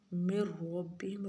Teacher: من ربهم را پڑھا جائے گا، نون نہیں پڑھا جائے گا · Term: ادغام